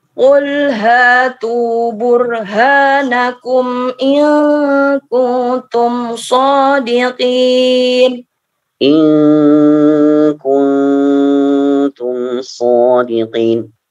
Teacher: Ikhfanya ditahan lagi 2 harakat.